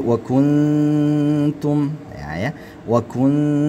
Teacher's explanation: Hukum nun mati bertemu dengan ta ialah ketika nun mati bertemu dengan ta, maka dia diikhfakkan ya. Ah, ya. Maka disamar-samarkan bunyinya. · Ya, maka disamar-samarkan bunyinya. Antara nun dan ta itu disamar-samarkan walaupun arahnya sudah mengarah ke huruf yang akan disebutkan, yaitu huruf ta. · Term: diikhfakan